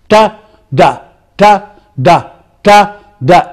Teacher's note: It is the tongue. Against the teeth ridge, against the alveolar. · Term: alveolar sounds